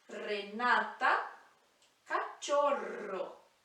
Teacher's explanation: r marcado de espanhol que vibra a língua no céu da boca · Quando ele está no início da palavra ou quando tem doble R, é aquele som R, do R marcado do espanhol, que vibra a língua no céu da boca.